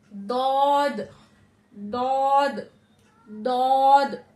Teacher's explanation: जबान की करवट को हमें अपने पांच दाढ़ों से ऊपर के पांच दाढ़ों से टच टच करना है · जबान की करवट को हमें अपने 5 दाढ़ों से, ऊपर के 5 दाढ़ों से टच करना है। ठीक है, नीचे के नहीं, ऊपर के 5 दाढ़ों से टच करना है, हल्का उसको दबाते हुए।